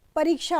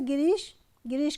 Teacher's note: छोटा ई अर्थात ह्रस्व ई और दीर्घ ई मिलकर बनाते हैं दीर्घ ई